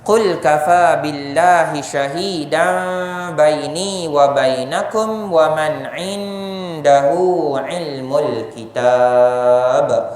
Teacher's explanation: Qalqalah besar di hujung ayat